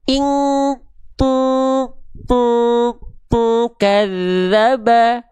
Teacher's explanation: kalau huruf kaf kan berarti dengungannya dia mendekati eng alias kuat.